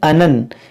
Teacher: یہاں پر دیکھیں نون مشدد ہے، اس میں غنہ کریں گے